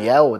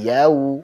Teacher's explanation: Jadi bukan yao ya, bukan yao, tapi yau. Monyongkan, wawunya jelaskan, yau. Maliki yaumiddin.